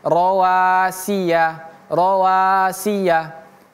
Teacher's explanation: Kemudian rawasi ini si dan ya pendek ya tidak boleh kita baca rawasiya